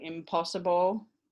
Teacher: um in or on and then if it's phonological environment is just before a bilabial it will change to m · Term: bilabial matching